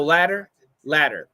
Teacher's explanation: the idea of a flap T your tongue touches once to give us that almost a D sound